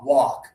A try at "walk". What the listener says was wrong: Now you're doing a little bit of the L. So it's not walk, it's just walk. A lot of students pronounce the L a little bit. A lot of students pronounce the L, but the L is not necessary. It's just walk. It rhymes with sock under your shoe here, okay?